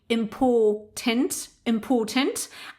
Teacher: in the British variety, we don't pronounce the r